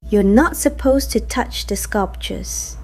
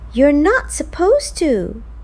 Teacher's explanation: Weak to before another word, full to when it's the last word in the sentence.